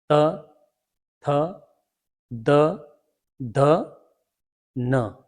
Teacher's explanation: त थ द ध न का उच्चारण जब हम करते हैं तो जीभ दांतों के पीछे वाले हिस्से पर लगती है।